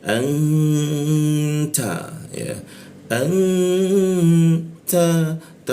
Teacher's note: Nunnya berwarna hijau artinya apa? Kita dengungkan ya. N-nya itu berubah jadi eng. Kita dengungkan di mana?